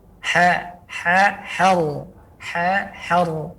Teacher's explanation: Suara dari tengah tenggorokan kemudian ke gusi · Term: huruf ra